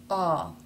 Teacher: the jaw drops a little bit more and the tongue is sort of raised slightly all over not more in one place than in another a the tip of the tongue is forward it can either